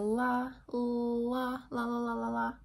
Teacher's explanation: Lateral approximant means approximant, it's happening on the side of the tongue, where it's like getting close but not quite causing any friction. In English, the only lateral approximant that we have is at the alveolar ridge with the la, la, la, la, la, la, la.